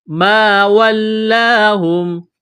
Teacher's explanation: الف سے پہلے زبر ہے، حروف مدہ الف ہے، ایک الف کے برابر اس کو کھینچنا ہے ، یہاں لام کو دبانا ہے تشدید کی وجہ سے، ایک